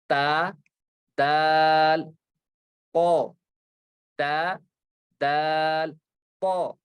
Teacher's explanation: जुबान की नोक लगती है ऊपर के दांतों की जड़ के साथ